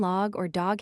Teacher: The o sound in American tends to convert itself into an a sound. Cog still retains a puro, but one seldom hears it in log or dog.